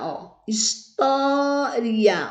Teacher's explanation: O tó é a sílaba mais forte, é a sílaba que nós pronunciamos com mais força, com mais intensidade.